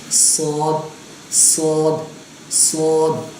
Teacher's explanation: اس چیز کا آپ نے بہت خیال رکھنا ہے کہ اس کو سواد نہیں پڑھنا اور سین کی طرح نہیں پڑھنا, اس کو موٹا پڑھنا ہے, منہ بھر کے پڑھنا ہے